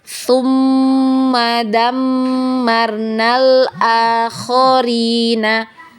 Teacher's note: wajib digunnah atau wajib didengung. Jadi ditahan ya, didengungkan dulu, kemudian temponya 2 harokat.